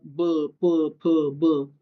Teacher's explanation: की इथं फक्त ओठच एकमेकांना चिकटतात. बाकी जीभ पुढे चिटकत नाही. त्याला ओष्ठ असं म्हणतात.